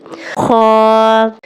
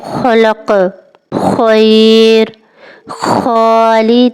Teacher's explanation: گلے سے ہلکی رگڑ والی آواز نکالیں، یعنی آپ کو گلے کے اوپر والے حصے سے ہلکی سی رگڑ محسوس ہوگی